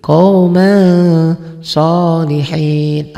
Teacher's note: Qauman bunyi n-nya dibacanya n-nya tambah g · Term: ikhfa